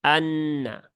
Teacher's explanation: A harus jelas ya bukan Ha tetapi a ya Anna kemudian nunnya bertasdid maka ya tunaikan tasdidnya Anna ya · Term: Hamzah wasal